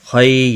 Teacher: یالین ہے، تھوڑا نرمی کے ساتھ کھینچ کر ادا کریں گے۔ خا پر بھی پڑھا جائے گا، حروف مستعلیہ میں سے بھی ہے۔